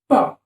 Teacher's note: the upper lip and the lower lip these two articulators come into close contact and that is why they make a closure in your mouth as soon as you open your mouth the sound is produced